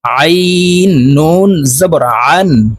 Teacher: আইন হরফকে হালুকের মধ্যখান থেকে চাপ দিয়ে উচ্চারণ করব কারণ আইনের মাখরাজ হালুকের মধ্যখান থেকে হবে আইন নুন জবর আন